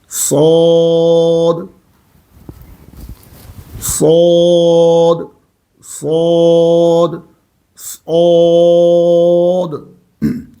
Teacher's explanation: سیٹی بھی نکلے گی اور صاد موٹا بھی پڑھا جائے گا